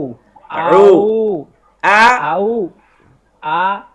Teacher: আউযু আউযু কেন, আউযু কইলে তো এই যে এখান থেকে বলতেছেন, এইখান থেকে আউটা হইতেছে। আউ আইন এখানে একদম গলার মধ্যে চাপ দেন।